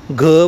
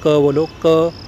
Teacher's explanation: महाप्राण ख बोलने में ज़्यादा हवा बाहर निकल रही